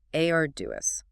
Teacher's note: stress on the first syllable. Three syllables total.